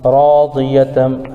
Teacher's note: الف سے پہلے را پر زبر ہے اس لیے مدہ بھی ہوگا اور یہاں را پر پڑھی جائے گی۔ تنوین کے بعد حروف یرملون میں سے میم آ رہا ہے اس لیے ادغام یرملون ہوگا، یعنی ادغام یرملون مع الغنہ، اس کو ادغام نافذ بھی کہتے ہیں، جیسے راضیتم مرضیہ۔